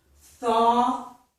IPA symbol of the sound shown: θɔ